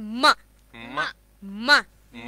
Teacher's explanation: see the nose is getting vibrated from inside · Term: nasal sounds